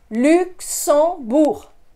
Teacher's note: Notice I don't pronounce that G at the end.